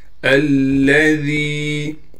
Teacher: الذی، حمزہ کو زبر دے کر لام سے ملائیں گے، لام پر تشدید ہونے کی وجہ سے تھوڑا ٹھہراؤ کریں گے۔ ذال کو نرم کر کے پڑھیں گے، ذال کے بعد یا مدہ ہونے کی وجہ سے ذال کو ایک الف کی مقدار کھینچیں گے۔